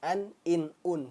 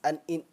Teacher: Nun sukunnya jelas. An, in, un. Kemudian dia dibaca pendek.